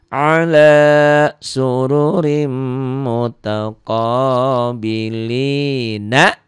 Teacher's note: Ri masukin ke mim. Karena mim ini bagian dari idgham bi gunnah, dari gunnah, jadi ada nyamber, ditahan dan dengung ke hidung.